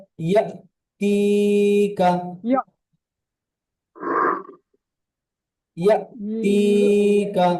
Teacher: হালাকের বা কণ্ঠনালীর শুরু হতে উচ্চারিত হয় হামজা